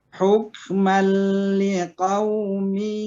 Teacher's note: Apabila ini ya, apabila nun mati atau tanwin bertemu dengan huruf lam dan ro, maka nun mati atau tanwinnya tidak didengungkan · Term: idgham bila guna